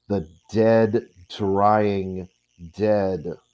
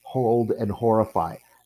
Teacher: There is no sound in that, in the H sound. So we have the voiced hard consonant, followed by the voiceless but more noisy F sound to the exact whisper of the H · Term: consonance